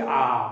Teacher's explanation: আর আগে যখন উচ্চারণ করছি আ, দেখো মুখটা পুরো খুলে যাচ্ছে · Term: বিবৃত স্বর